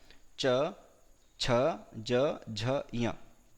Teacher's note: च वर्ग मतलब च, छ, ज, झ, ञ, यकार और शकार का उच्चारण स्थान तालु होता है।